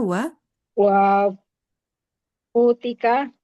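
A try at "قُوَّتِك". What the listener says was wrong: bukan qut. Qut makanan, tapi kalau quwwah kekuatan. Tulisannya persis.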